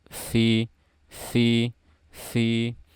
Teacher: Kemudian ba sudah, dan kemudian berikutnya ada huruf fa. Fa sifatnya hams dan rohwa, jadi alirkan suaranya sedikit dan harus terdengar suara aliran nafas di situ.